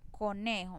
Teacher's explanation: ya no tiene el acento en la última sílaba, sino en la penúltima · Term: palabras graves